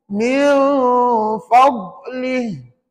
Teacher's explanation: sepanjang tepi lidah, kiri atau kanan, ditekan ke gigi gerham atas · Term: makhraj huruf dhad